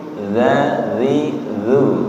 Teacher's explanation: ujung lidah menyentuh ujung gigi seri atas